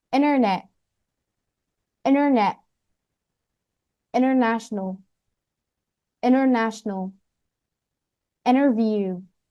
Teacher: When the NT comes between vowels, the T can be dropped. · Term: NT between vowels